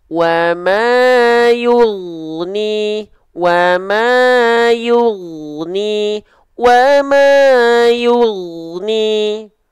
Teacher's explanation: huruf ghoin itu punya sifat namanya rokhwah, mengalir suara. Jadi dialirkan suaranya, bukan dipantulkan.